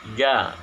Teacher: Nah, huruf ja ini makhrajnya atau tempat keluarnya huruf yaitu di tengah lidah dan langit-langit. Jadi si tengah-tengah lidah ini nempel dengan langit-langit bagian atas.